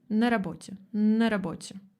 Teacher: Когда я произношу это быстро, я не произношу «на». Я произношу «н».